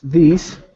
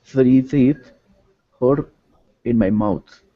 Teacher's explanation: so we have the first one voiced and the next three unvoiced